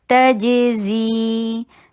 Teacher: यऊ मल्ला ये इदगाम हो रहा है बगैर गुन्ना, ला 2 हरका लॉन्ग, तजज़ी ताकि के ऊपर जबड़े को खोलिए, जीम के ऊपर कलकला कीजिए, बाउंस कीजिए। तजज़ी जीन में जी को 2 हरका लॉन्ग कीजिए।